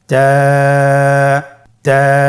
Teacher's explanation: জিহ্বার আগা সামনের উপরের 2 দাঁতের গোড়ার সঙ্গে লাগিয়ে উচ্চারিত হয়।